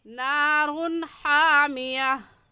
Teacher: नारून में भी तनवीन के बाद हरूफ हल्की में से हा आ गया है, इसलिए इस तनवीन पर हम गुन्ना नहीं करेंगे और ऐसे पढ़ेंगे नारुन हामिया।